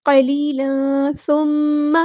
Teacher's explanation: मीम पे गुन्ना ज़ुमानी हो रहा है, अलिफ के बराबर रुकेंगे।